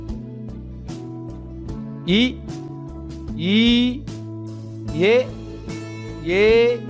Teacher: வாய் திறக்கும் முயற்சியுடன் நாக்கின் அடி ஓரமானது மேல்வாய் பல்லை பொருந்தும் முயற்சியால் பிறக்கின்றன